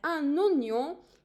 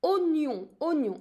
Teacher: I do have OI, but I'm not pronouncing it wa. It's an exception actually.